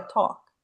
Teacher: Aquele L, ele não tem som nenhum nessa palavra, é talk.